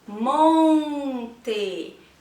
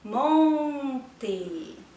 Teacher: Neste caso, a letra O está sendo nasalizada.